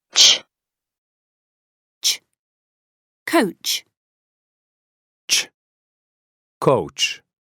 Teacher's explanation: when you touch your throat you shouldn't feel a vibration because it is unvoiced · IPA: tʃ